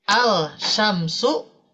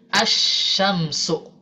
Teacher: lam sukun ketika kedatangan huruf Syamsiah maka lam ini tidak akan dibaca · Jadi asyamsu ya. Meskipun secara tulisan masih ada huruf lamnya, tapi secara bacaan itu dihilangkan ya. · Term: diidghamkan